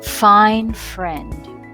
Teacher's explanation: a continuous release of air between the top teeth and the bottom lip it is therefore possible to extend as much as you like